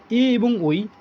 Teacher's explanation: এ শব্দটা একেবারে আমাদের গলার মাঝ বরাবর কন্ঠ থেকে তৈরি হচ্ছে এবং ঐ উচ্চারণ করলে তালুরও কিন্তু ব্যবহার হচ্ছে। এজন্য এগুলোকে এ এবং ঐ কে কন্ঠ তালব্য স্বর বলা হয়ে থাকে।